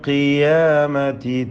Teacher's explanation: ഖാഫിന് കുറഞ്ഞ തഫ്ഖീമാണ് കസ്റായതുകൊണ്ട്